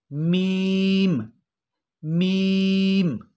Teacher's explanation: मीम दोनों होंठों के खुश्क हिस्से से, दोनों होंठों के खुश्क हिस्से से अदा होगा मीम मीम।